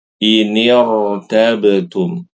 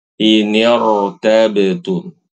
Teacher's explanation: walaupun dia berharokat kasroh, huruf sebelumnya, tetap ro-nya dibaca tebal. Jangan dibaca inirtabetum, tipis tidak.